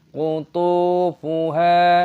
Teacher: Kutu, memanjangkan th, ada sukun wawu, mad thabi'i, qutufuha. Huruf H dibaca panjang, ada tanda alif, mad thabi'i, panjangkan dua ketukan